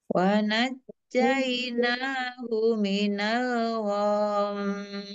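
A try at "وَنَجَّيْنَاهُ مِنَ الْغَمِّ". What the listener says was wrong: Nah, hati-hati. Go-nya jangan panjang, gom, hati-hati ya. Wa najjaynahu minal gham. Langsung am.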